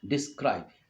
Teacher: unstressed syllable followed by a stressed syllable